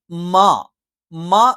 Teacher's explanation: മ എന്നുള്ള അക്ഷരം നമ്മൾ ഉച്ചരിക്കുന്നത് ചുണ്ട് മൃദുലമായി അടച്ചു വെച്ചുകൊണ്ടാണ്